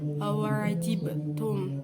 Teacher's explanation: Di situ ada qalqalah sukro berupa huruf ba. Qalqalah sukro yang berada di tengah kalimat dan matinya asli.